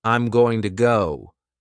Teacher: the words are linked together, and it might sound like I'm gonna go, instead of saying each word separately. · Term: connected speech